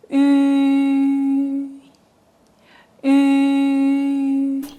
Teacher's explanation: Lips rounded as if about to whistle. Front part of the tongue rises, similar to the tongue position for E, but with rounded lips.